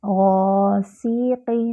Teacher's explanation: وَمِن شَرِّ، شَرِّ غاسق، غین جو ہے وہ موٹا حرف ہے، اور غین ادنیٰ الحلق سے ادا ہوتا ہے۔ الف خالی، اس سے پہلے فتحہ الف مد بن رہی ہے، اس کو 2 حرکات برابر لمبا کریں گے۔